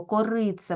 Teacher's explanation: що ми тут бачимо корице наголос падає на и так і у нас е знаходиться в кінці ненаголошений е так і тому він не буде уподібнюватися не буде наближатися до и Ось так він вимовляється чітко корице